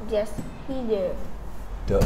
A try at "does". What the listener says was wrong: Not duh, does.